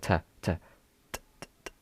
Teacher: If you make f there is no vibrations whatsoever which is nice or t there's no vibrations. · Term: voiceless